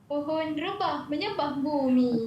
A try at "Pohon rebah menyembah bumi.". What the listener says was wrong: Tak ikut nada saya tu. Pohon rebah menyembah bumi. Kena jangan senyum sangat sebab ini marah ni, okey?